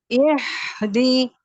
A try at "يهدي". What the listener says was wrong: இல்ல. வித்தியாசம் வருது இல்லையே. நல்லா இன்னும் கீழே வரணும். இஹ்தி இஹ்தி